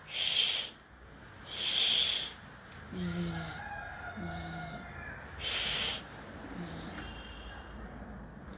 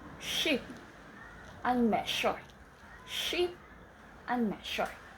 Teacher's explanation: Tongue touches just behind the alveolar ridge. These sounds are slightly deeper in the mouth than alveolar. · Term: post-alveolar